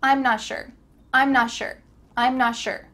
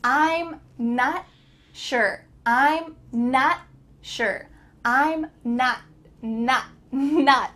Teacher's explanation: Often in daily conversation in fast English, the T at the end of words is cut off. So your tongue is going to be at the top of your mouth, almost going to make the T sound, but there's no air that comes out.